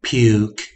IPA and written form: pyuk (puke)